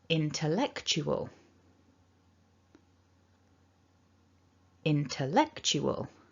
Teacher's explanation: terms of how much effort you put into saying these syllables the most strong should be eck the second strong should be in and then the other syllables should be a little weaker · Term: primary or main stress, 2 stresses